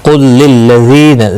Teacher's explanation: ذی یا مدہ ہے، ایک الف کے برابر کھینچ کر پڑھیں گے۔ یہاں پر ساکن کے بعد مشدد حرف ہے، گویا کہ لام ساکن نہیں پڑھا جائے گا، اس لام کے ساتھ قاف ملے گا، قاف مستعلیہ ہے، پر بھی پڑھا جائے گا۔